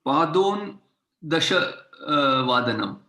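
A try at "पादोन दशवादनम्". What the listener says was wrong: Padona Dashavadanam. There is no halanta. Padona. Dashavadanam.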